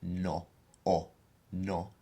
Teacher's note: don't pronounce it like we do in English which is no has to be a much more pure vowel sound